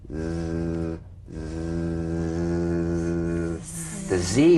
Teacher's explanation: feel a smooth strong vibration in the teeth and in the front of the tongue now · z vibrates in that very small open space between the tongue and the upper teeth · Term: voiced s sound